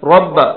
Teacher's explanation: را کو موٹا پڑھنا ہے کیونکہ را پر زبر ہے